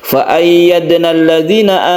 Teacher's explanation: ada sukun Dal yang ada di tengah ayat maka kita sebut qalqala Sugra Sugra artinya kecil itu menandakan bahwa dia ada di tengah-tengah ayat